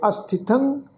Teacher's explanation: ਤਤੇ ਉੱਤੇ ਟਿੱਪੀ ਦੀ ਮਾਤਰਾ ਨਾਸਕ ਉਚਾਰਨ ਕਰਾਂਗੇ